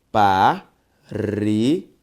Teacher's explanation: Perceba que a sílaba tônica de parede é o re. Uma palavra paroxítona.